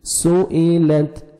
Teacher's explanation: سین کو سیٹی سے ادا کریں گے